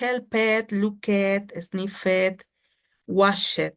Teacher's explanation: vamos a silenciar la E, ¿ok? Y que la D suene como una T, con verbos que tengan estas terminaciones.